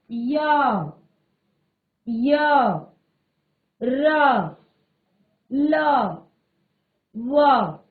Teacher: इन व्यंजनों के उच्चारण में जीवा पूरी तरह से उच्चारण अवयवों को स्पर्श नहीं करती है। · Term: अंतस्थ